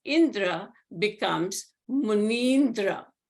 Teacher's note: these two vowels are replaced by a long E. So Muni plus Indra becomes Munindra, chief of sages.